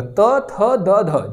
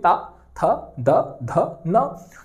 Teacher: दांत से इसका उच्चारण होगा, त थ द ध, जीभ आपकी जाके दोस्तों दांत में टकराएगी।